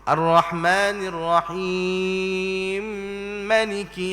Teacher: itu dipanggil idgham dia dah masukkan huruf mim ke dalam mim yang Selepas itu hukum idgham ni dipanggil Idam Kabir di sisi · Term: idgham kabir